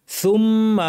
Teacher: উচ্চারণ করার চেষ্টা করতে হবে সু তাহলে উচ্চারণটা স্পষ্ট হবে সুম্মা মিমের উপর তাশদিদ লম্বা গুন্না